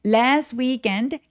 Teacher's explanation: last weekend 얘네 둘 다 강세가 굉장히 길어져서 장모음으로 last weekend 아니고 last weekend라고 여유롭게 소련 내 주세요.